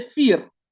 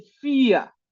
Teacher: La R después de una vocal en el alemán de Alemania suena como una a. En los otros alemanes, en el de Austria o en el de Suiza, suena como una R.